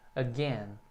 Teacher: o A que fica sozinho e a sílaba tônica é a segunda, o gain. Então o A é bem curtinho, again. About.